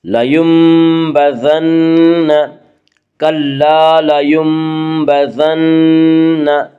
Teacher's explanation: اس کا قاعدہ ہے کہ نون ساکن یا تنوین کے بعد اگر با ہے تو وہاں پہ قلب ہوگا، یعنی نون ساکن اور تنوین کو میم سے بدل کر غنہ کے ساتھ پڑھیں گے